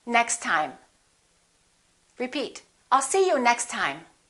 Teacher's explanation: link them now next time repeat i'll see you next time we only pronounce one t